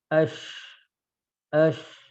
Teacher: Cuma kalau kita perhatikan dari gambar lidah ini beda. Huruf shin itu lidah tengah ngangkat, lidah tengah ngangkat, tapi tidak nempel ke langit-langit, ya. Ash, ash, nah, ash, nah, lidah tengah ngangkat, tapi hanya mengarah ke langit-langit, dia tidak nempel ke langit-langit, ya.